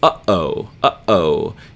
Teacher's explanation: what we call the gladle stop sound that is uh-oh uh-oh you're cutting off the flow of air for just an instant